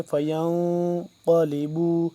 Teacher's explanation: نون ساکن پہ ہم کیا کریں گے؟ اخفا کریں گے، ناک کے اندر لے جا کر آواز کو پڑھیں گے